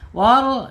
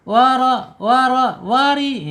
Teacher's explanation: bacaannya ada penyempitan di kerongkongan ya kalau tebal